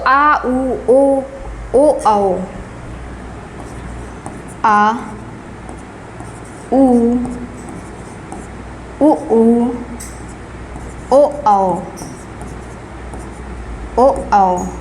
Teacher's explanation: ये हमारे जीभ के पीछे के भाग से उच्चारण होता है। आ उ ऊ ओ औ पीछे से उच्चारण होता है। · और पश्च जो है ये क्या है, तो आ उ ओ आओ, आ उ ओ आओ, ओ आओ। ये हमारे जीभ के पीछे के भाग से उच्चारण होता है।